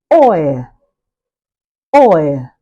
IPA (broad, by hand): ɔɪə